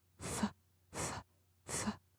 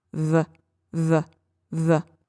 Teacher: It's the exact same shape in my mouth. My lower lip is vibrating, but the F is unvoiced and the V is voiced.